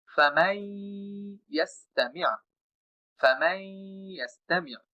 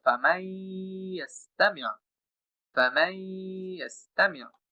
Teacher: নুনকে বাদ দিয়ে মিম দ্বারা সরাসরি যে আমি ইয়াকে যুক্ত করতেছি, এটার নাম হচ্ছে ইদগাম। যেহেতু আমি মিমের সাথে ইয়াকে যুক্ত করতেছি নুনকে ছাড়াই, এবং এখানে যে আমি কিছুটা দীর্ঘ সময় গুণনা করতেছি, এটার নাম হচ্ছে গুন্না সহ।